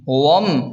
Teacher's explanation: واو کو ڈائریکٹ میم کے ساتھ ملا کر پڑھیں گے، الف نہیں پڑھیں گے